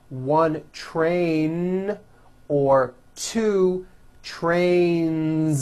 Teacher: Two trains with a voiced Z ending.